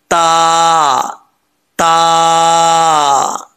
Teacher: ता यह दो नुतो वाला ता जो है ये बारीक पढ़ा जाता है इसको पुर पढ़ने की जरूरत नहीं है · ता का मखर जुबान की नोक ऊपर वाले दांतों की जड़ों से लगे तो क्या पढ़ा जाता है ता पढ़ा जाता है बारीक ता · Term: दो नुक्तों वाला ता